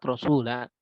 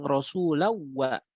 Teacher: Maka dia terbaca, dipanjangkan kalau dalam keadaan wakaf. Tapi kalau dalam keadaan wasol dia hilang